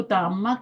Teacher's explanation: اگر اوپر ہو تو زبر تأما ہوتی ہے، تأما میم دو بار پڑھ رہے ہیں نا اس کو تشدید کی وجہ سے